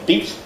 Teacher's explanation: So a word like beat has a brief clipped vowel. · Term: pre-fortis clipping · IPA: [biːt]